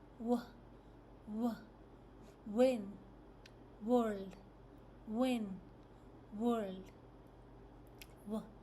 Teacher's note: So the mouth is rounded and slightly open. The tongue is towards the back of the mouth.